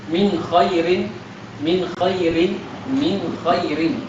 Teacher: Izhar, di situ ada gunnah tapi dia kurang sehingga tidak nampak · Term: naqis